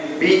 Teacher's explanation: இரண்டு உதடுகளும் ஒட்டி அப்படியே திறந்து கொள்வது மூலம்தான் அந்த பாவுடைய வெளிவரும்